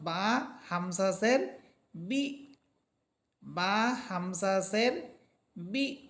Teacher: পাচ্ছি এটার উপরে আছে সাকিন বা হরফ হামজাকে গিয়ে ধরবে আর বা হরফ যখন হামজাকে ধরবে তখন আমরা একটা ধাক্কা দিয়ে পড়বো